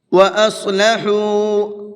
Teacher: صاد کو پر کر کے پڑھیں گے اور ہا کو کھینچ کر کے پڑھیں گے، کیونکہ یہاں پر واو مدہ کا قاعدہ ہے اور زیادہ نہیں کھینچنا ہے، اس کو صرف 1 الف کے برابر کھینچنا ہے۔